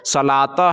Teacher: تو جب گول تا پر وقف کرتے ہیں، رکتے ہیں، ٹھہرتے ہیں، تو وہ گول تا جو ہے وہ ہائے ساکنہ بن جاتی ہے، یعنی ہا ساکن بن جاتی ہے